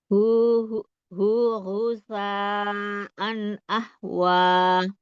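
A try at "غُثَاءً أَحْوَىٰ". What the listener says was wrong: Nah, bedain tadi kalau Umi tadi baca lidahnya ujung lidah nggak keluar. Itu harusnya ujung lidahnya keluar ya huruf sa. Iya, sasisu.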